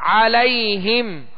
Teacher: عین کو درمیانی حلق سے ادا کرنا ہے